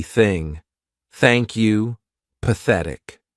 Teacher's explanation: the unvoiced th sound which means our vocal cords are not going to vibrate